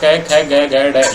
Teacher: ये तो कै वर्ग हुआ और कंठ में बोला जाता है। इसका वर्ण स्थान ये है, उच्चारण स्थान कंठ होता है।